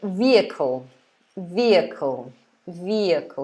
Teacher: so there's no h at all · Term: silent letter h